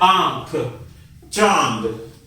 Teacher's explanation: अनुनासिक का उच्चारण गले और नाक से होता है,